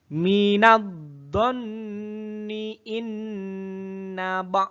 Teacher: bacaan gunnah karena ada nun berharokat tasdid